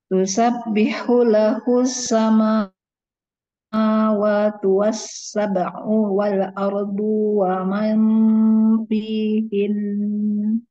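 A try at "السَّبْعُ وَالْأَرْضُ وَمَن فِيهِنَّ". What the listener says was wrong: Sab'u wal-ardu wa man, itu U-nya pendek.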